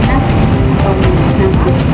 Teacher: udara keluar melalui rongga hidung atau nasal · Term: konsonan nasal